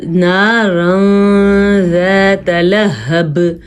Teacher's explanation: کیا جی یہاں پہ ہم نے اخفا کیا ہے کیونکہ نون تنوین کے بعد زال آیا ہوا ہے، زال حروف اخفا میں سے ہے، اس لیے ہم نون تنوین کو تھوڑا سا چھپا کے پڑھیں گے